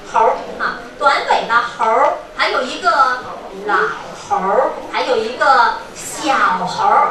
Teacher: 发完了猴之后呢，你把舌头卷上去就已经可以了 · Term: 儿化